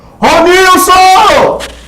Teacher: você vai perceber que o nil foi o mais forte porque você chamou lá distante. E aí você descobre a sílaba tônica.